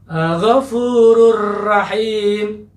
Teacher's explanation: Setelah huruf dal, huruf ra misalnya, ya, pada kata Ghafurur Rahim, itu juga melebur di situ ya. Alif lamnya dengan huruf ra itu tidak dibaca secara jelas ya.